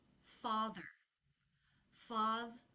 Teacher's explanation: r r will be very flat and low in Pitch father this ending is written in IPA with the schah and the American R symbols but you definitely don't want to make a separate schah